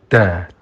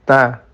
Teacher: Itu sama-sama menggunakan pojok lidah dengan akar gigi tengah atas. Hanya saja untuk dal itu pojok lidahnya agak melebar. Untuk ta sedikit saja. Da, jadi agak lebar.